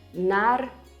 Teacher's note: this is actually another common trait of the Russian accent. We tend to make stressed vowels slightly longer.